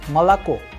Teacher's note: is pronounced as malako because O is not under stress, is going to turn into a sound of A